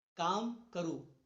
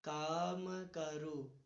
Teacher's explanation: मैंने कहा बल देना है, तो मैं देखिए कहीं पे बल दे रहा हूं, काम करो, काम का पे जोर दिया, माँ को छोड़ दिया, फिर का पे हल्का जोर दिया और रो पर देखिए ज्यादा जोर दे रहा हूं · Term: बलाघात